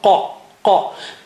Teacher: Touch the inner part of the tongue to the roof of the mouth right at the back, behind the uvula. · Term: qaf